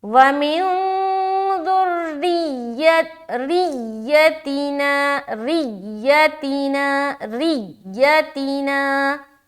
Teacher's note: یا کے اوپر جب تشدید آئے نا تو آواز ذری سخت قسم کی نکلے گی. جیسے کہ وَمِن ذُرِّيَّتِنَا، ریتینا ریتینا ایسا.